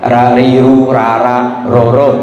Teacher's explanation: berusahalah dulu gitu kan karena ro itu sifatnya sendiri sudah takrir namanya takrir itu lidah bergetar